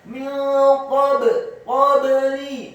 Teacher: Kemudian qafnya min qabli, qafnya dibaca tafkhim, fathah satu harokat, ba-nya dibaca sukun dan wajib untuk diqalqalahkan atau dipantulkan.